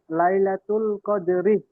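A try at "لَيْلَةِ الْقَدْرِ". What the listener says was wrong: মাশাল্লাহ, রিহ বলবেন না, লাইলাতুল কদরি। রিহ বললে হা বেরিয়ে আসছে।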